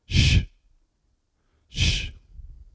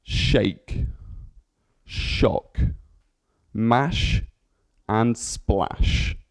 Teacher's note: So to create sh, air is forced between the center of the front of the tongue and the teeth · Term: sh noise